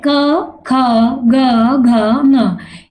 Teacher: ये पांचों जो वर्णों की ध्वनि है वो कंठ से उच्चारित हो रही है